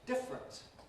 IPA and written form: ˈdɪfrənt (different)